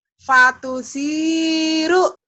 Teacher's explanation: Sa-nya belum mantap, sa ujung lidah ya